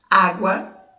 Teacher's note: Para ser ditongo, as letrinhas precisam ficar na mesma sílaba, elas não podem ficar separadas. Na palavra água, o som da vogal A é pronunciado com mais força do que a vogal U.